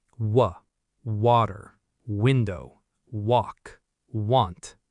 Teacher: W uses rounded lips with no teeth. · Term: W sound